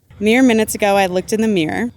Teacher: you end up with mirror and mere both coming out as mere